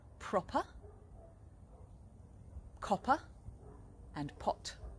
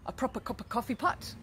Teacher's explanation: we make the pa sound by putting our lips together i'm blowing them open with some air